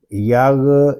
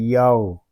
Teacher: غین یہ حروف مستعلیہ میں سے ہے، اس کو پر یعنی موٹا پڑھیں گے، اس کو یاغ اس طرح نہیں پڑھیں گے، اس کو پڑھیں گے یاو۔